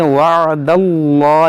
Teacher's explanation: یہاں پر اس میں جلال سے پہلے زبر ہے، اس کو موٹا پڑھیں گے